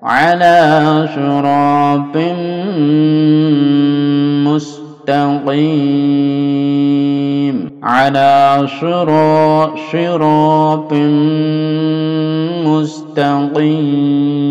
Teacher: Suratim, panjangkan dengungnya. Suratim, sekitar 2 sampai 3 ya.